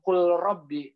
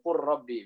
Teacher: Lamnya nggak bukan kul rabbi, tapi langsung qurrabbi biasanya.